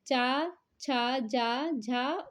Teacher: तालू और जीभ के स्पर्श से बोले जाने वाले वर्ण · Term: तालव्य